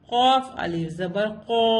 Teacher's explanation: اس کو قا نہیں پڑھیں گے, قو پڑھیں گے. ہیوی لیٹر ہے